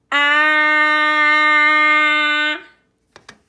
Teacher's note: I can hold on to that ah, that short A sound for as long as I want, and it will not change. That's because all the vowels are stretchy sounds. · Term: continuous sound